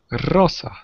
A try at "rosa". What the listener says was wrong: Perfecto. Rosa. Muy bien.